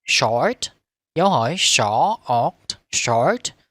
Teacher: Các bạn chú ý những cái từ đứng trước dấu chấm phẩy. Người ta thường có ngữ điệu dấu hỏi lên giọng